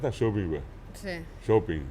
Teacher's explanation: y allí ya no sale la ng final